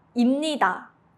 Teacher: When 비읍 meets 니은, it becomes an 미음 니은 sound. The lips naturally close, so 비읍 turns into 미음.